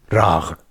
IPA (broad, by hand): raʀ